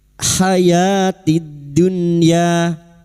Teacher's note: bertemunya nun sukun dengan huruf ya atau wawu disebut dengan idhar wajib. Nun sukun dibaca jelas tanpa mendengung